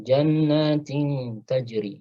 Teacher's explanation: tanwin kasrah ketemu ta ikhfa hakiki tajri taj, ya, ada qalqalah jim, ya, sifat qalqalah, karena jim bukan termasuk huruf isti'la, maka qalqalahnya tarqiq, ya, qalqalahnya tipis, taj, ya, tajri.